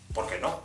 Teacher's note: the S can be a regular S or it can be like an SH sound